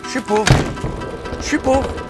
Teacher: I can go through all the phonological reasons why je suis gets reduced to suis